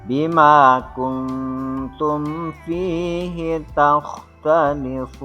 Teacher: Tajwid selanjutnya adalah pada kalimat yang bergaris bawah di akhir ayat, ini disebut dengan mad arid lis sukun. Cara bacanya panjang sekitar 6 harkat.